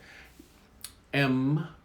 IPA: m